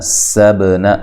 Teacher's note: سین کو باریک سیٹی سے ادا کرنا ہے، با پہ قلقلہ کرنا ہے، نون کو لمبا نہیں کرنا۔